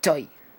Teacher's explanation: una O abierta con una I al final